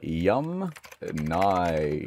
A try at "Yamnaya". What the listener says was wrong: Okay, so the Yum Naya people, not Yum Nya.